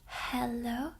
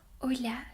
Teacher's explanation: Notice how in English you'll say the H, hello. But in Spanish you don't. You only say hola. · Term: silent letter